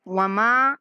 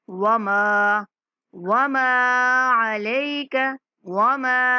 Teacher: ماں کی آواز ناک میں نہیں جانے دیں گے